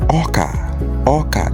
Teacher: Oka is a high tone, low tone. start O with dot on dot with the high pitch on top, or ka, which is can.